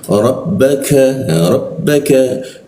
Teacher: huruf k itu ada di sikut tenggorokan lidahnya diturunkan sehingga rungga udara terbuka dan ada hembusan udaranya